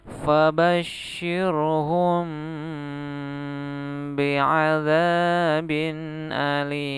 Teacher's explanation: membaca ikhfa safawi jangan buru-buru, dia harus ditahan dulu. Ditahan dan bibirnya tetap menempel ya.